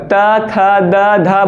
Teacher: आपका जुबान जो है वो दांत से सट रहा होगा